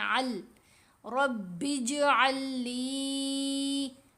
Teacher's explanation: یہ جو ساکن لام ہے یہ مشدد کے اندر ہی مرج ہو جائے گی. یوں سمجھے سائلنٹ ہے، خاموش ہے، نہیں علیحدہ سے پڑھی جا رہی.